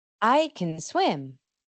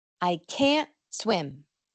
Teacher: Esta última es muy importante porque la T final no suele sonar. Entonces distinguimos entre poder y no poder por este corte de sonido de la N junto con el schwa